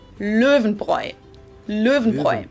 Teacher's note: the R is pronounced in the back of your throat, like in French. But if you can do a rolled R like in Spanish, that works too.